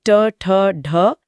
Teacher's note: ट वर्ग यानी ट, ठ, ढ, इन्हें मूर्धन्य कहते हैं क्योंकि जीभ मुड़कर मुंह की छत को छूती है